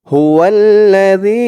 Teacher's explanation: তিন আলিফ টান মধ্যে মুনফাসিল এই যে মধ্যে মুনফাসিলের চিহ্ন দিয়েছে এই জালের আওয়াজটা কিন্তু একদম নরম পাতলা করতে হবে জিহ্বার মাথা উপরের দাঁতের মাথার সাথে লাগবে